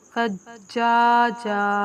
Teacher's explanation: دو زبر والی تنوین وقف کی حالت میں الف سے بدل کر پڑھی جاتی ہے